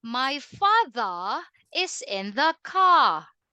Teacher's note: you cannot hear the R sound